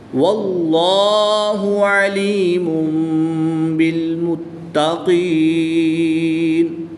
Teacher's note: اس میں جلالت اللہ عز و جل کے لام سے پہلے حرف پر زبر ہے تو اس لام کو پر یعنی موٹا پڑھیں گے